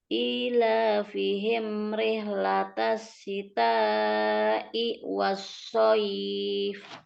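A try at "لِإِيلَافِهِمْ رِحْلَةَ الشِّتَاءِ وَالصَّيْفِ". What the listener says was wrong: Jangan diputus i wassoif, nggak boleh ya. Syita'i itu satu kata ya. Syita'i. Panjang lagi. Ila, yang panjang itu kan. Ila fihim rihlatash syita'i wassaif. Kepanjangan i-nya lagi, dipendekkan i ya, hamzahnya yang setelah syita. Syita i, jangan syita i, nggak boleh ya panjang itu ya, pendek di situ.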